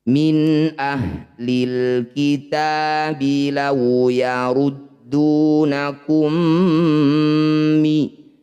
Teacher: Bunyi mim pertama masukkan pada mim kedua dengungkan dua harakat. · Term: idgham mimmi